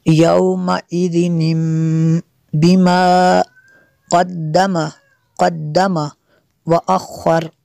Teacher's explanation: جو تنوین کا نون ساکن ہے اسے میم سے بدل کر پڑھیں گے۔